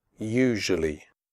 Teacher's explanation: The first U in usually is pronounced like the word you. The S is pronounced like je in television.